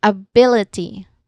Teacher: the stress syllable here in the word ability is bill which is the second syllable